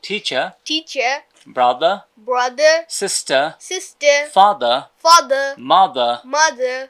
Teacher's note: এবার র যদি লাস্টে আসে তাহলে র এর উচ্চারণটা ব্রিটিশরা করে না।